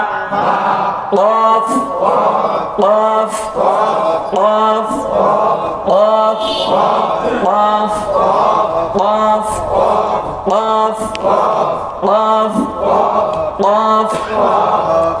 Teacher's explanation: এই অফটা জিহ্বার গোড়া তার বরাবর উপরে তালুর সঙ্গে লাগায়া